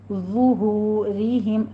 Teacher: ظہورہم، وا کو پور بھی پڑھیں گے، وا کے اوپر ہونٹوں کو گول کیجیے، ضمہ ہے